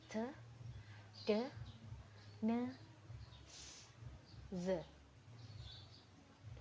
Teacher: Alveolar sounds involve the alveolar ridge as the passive articulator. The active articulator may be either the tongue blade or usually the tongue tip.